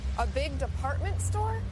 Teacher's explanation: raising her voice at the end of a sentence to make sure she understood about the department store.